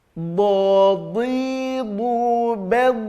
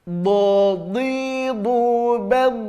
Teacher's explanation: Do ini merupakan huruf isti'la dan dia juga mutbaqah. Dalam semua kondisi baik kasrah, dhammah, fathah, kuat ketebalannya, tampak ketebalannya